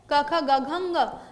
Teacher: कंठ्य वर्ण कौन-कौन से जिनका उच्चारण कंठ से किया जाता है।